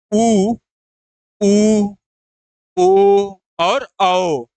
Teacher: कहीं ना कहीं जो हमारा ओष्ठ होता है ओष्ठ के पास वृत्त बनता है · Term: वृत्त मुखी स्वर